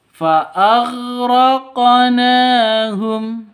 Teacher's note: Kalau tidak berharakat sukun ini bukan qalqalah. Karena di tengah seperti ini namanya qalqalah sugro. Lebih rendah pantulannya ya ketimbang qalqalah kubro.